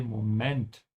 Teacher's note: Notice how I'm pronouncing Moment. The emphasis is on the end. In English, you say Moment.